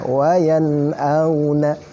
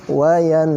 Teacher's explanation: Yang mana kaidahnya apabila nun sukun atau tanwin bertemu dengan huruf idhar yang 6, maka cara membacanya adalah dibaca jelas tanpa gunnah, nggak ada gunnah, harus jelas cara membacanya. Contoh misalkan di halaman 11, nun sukun ketemu dengan hamzah, maka cara membacanya adalah wayan'auna. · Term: idhar halqi